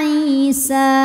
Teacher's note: Alif didahului harakat fathah alifnya alif bengkok atau Alif maksurah ya maka Sin panjang kalau berhenti dua harakat ya isa namun jika diteruskan atau diwasalkan sinnya Jadi pendek alifnya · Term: Mad thi